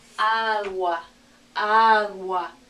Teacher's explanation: the oo and ah is going together, so it sounds to our ear like wa, like one sound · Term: diphthong